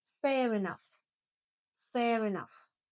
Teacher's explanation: The intonation is key. It's usually a falling, calm tone.